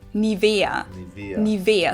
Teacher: So the emphasis is on the E.